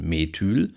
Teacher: das Ü hinten in Methyl ist dann lang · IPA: [me.ˈtyːl]